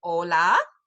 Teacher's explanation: the H makes no sound at all in Spanish it's always silent